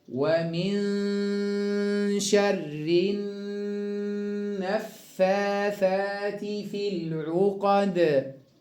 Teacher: الثاء حرف لثوي يخرج من طرف اللسان هكذا. ومن شر النفاثات في العقد.